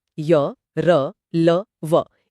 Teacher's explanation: हाँ, अंतस्थ का मतलब ही है बीच में स्थित। इनके उच्चारण में जीभ पूरी तरह स्पर्श नहीं करती, इसलिए इनमें एक प्रवाह होता है, स्वरों जैसा। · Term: अंतस्थ व्यंजन